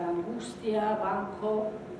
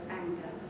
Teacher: Both English and Spanish have a velar nasal before the velar stops.